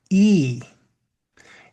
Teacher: in English there's a slight diphthong or dropping of tone in it. So E, if you hear that sound, your mouth is wide at the beginning and slightly closes as the sound ends. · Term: long E sound